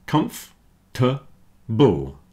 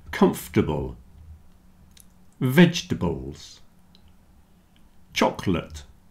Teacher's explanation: So comfortable, comf-t-able. You see the OR in the middle isn't sounding.